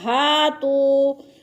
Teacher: ہاتوا، ہا کے اوپر الف مدہ، الف خالی سے پہلے ہا کے اوپر زبر ہے تو الف مدہ کو ایک الف کے برابر کھینچ کر پڑھتے ہیں۔ اور تو پہ بھی وہ مدہ کو بھی ایک الف کے برابر کھینچ کر پڑھنا ہے۔